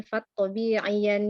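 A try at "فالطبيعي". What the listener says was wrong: Tabi'iyya. Ya, bukan yan.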